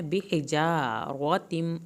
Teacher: آئے گا تو ایک الف کے برابر دیر لگائیں گے۔ بِحِجَارَةٍ، ہا کو حلق سے پڑھنا ہے